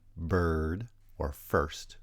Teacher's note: the high central vowel er as in bird or first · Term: rhotic approximant